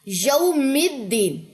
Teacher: میم کی زیر دال کے ساتھ مل گئی